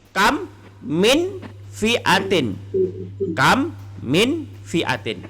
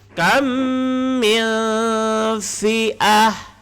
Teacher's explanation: Cara bacaannya ialah dengan cara mendengungkan. Apa yang didengungkan? Iaitu ketika masuk kepada bunyi mem. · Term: idgham mislain